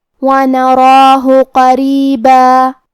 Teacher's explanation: قاف حروف تفخیم میں سے بھی ہے، تو ہم یہ حرف کو موٹی آواز میں پڑھیں گے. را کو پتلی آواز میں پڑھیں گے کیونکہ اس کے نیچے زیر ہے